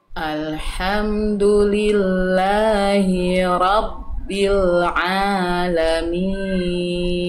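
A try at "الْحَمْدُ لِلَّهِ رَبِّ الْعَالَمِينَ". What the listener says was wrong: Tinggal dari hi tadi jangan sampai tamtid. Tamtid tuh agak kepanjangan sedikit. Ya, langsung masuk ke hiro, satu harokat. Alhamdulillahi Rabbil Alamin.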